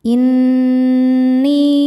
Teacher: Cara bacanya dengung. Tahan dengungannya kurang lebih dua harakat. · Nun hukumnya gunnah musyaddadah karena bertasydid nunnya. Cara bacanya dengung, tahan dengungannya kurang lebih 2 harokat. Inni. Ni mad tabi'i dhahiri karena ada ya sukun sebelumnya baris kasrah. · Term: dhunah musyaddadah